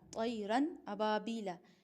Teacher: نون کی آواز کو، یعنی جو تنوین کے اندر بھی ہوتی ہے اور خود نون کے اندر بھی ہوتی ہے، اس کو ظاہر کر کے پڑھیں گے · ظاہر کر کے بلا گنہ کے، یعنی گنہ کرنے کے بغیر ہی طیرن فوراً اگلا پڑھنا ہے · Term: اظہار